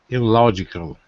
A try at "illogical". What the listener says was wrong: Illogical. Great.